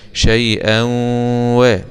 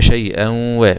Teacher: عندنا إضغام بغنة لوقوع الواو بعد الفتح، أو في رسم المصحف لما تلاقي الفتحتين كده في فتحة تسبق الأخرى يبقى تعرف على طول إن في هنا إضغام بغن، بخلاف لما تكون الاتنين متساويتين شكل بعض يبقى اسمه إيه؟